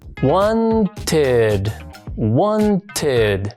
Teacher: Cuando un verbo termina en un sonido T o D, la ed suena así, id.